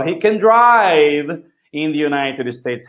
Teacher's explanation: no sentence stress, eu não estresso can, olha só. Eu estresso o drive